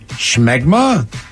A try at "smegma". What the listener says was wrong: No H. just smegma, not schmeg. Smegma.